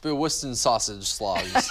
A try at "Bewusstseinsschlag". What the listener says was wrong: No. You added a syllable. So it's Bewusstseinsschlag.